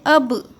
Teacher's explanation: جب بھی با کے اوپر جزم ہو تو با کی آواز میں ٹکراؤ محسوس ہونا چاہیے